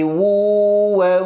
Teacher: tanwin ketemu waw, maka pada posisi idgham bi gunnah mesti sampai ke rongga hidung. Jangan hanya wu wa tidak, tapi wu wa sampaikan ke rongga hidung.